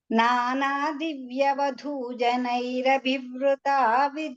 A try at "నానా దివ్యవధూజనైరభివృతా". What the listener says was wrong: అది ఎందువల్ల అంటే అభివృత ఆ వకారానికి మీరు రేఫ ఉచ్చారణ చేస్తున్నారు. అభివృత అంటున్నారు. అలా వద్దు. అభివృత అభివృత. నానా నానా దివ్య వధూజనైరభివృత. అక్కడ పేస్ ఆగడానికి కారణం ఏంటంటే మీరు రేఫ చెప్తున్నారు. అంటే రకారం, రక్తంలో ఉండే రకారాన్ని అక్కడ ఉంటున్నారు, అక్కడ లేదు అసలు. చాలా మృదువుగా అభివృత.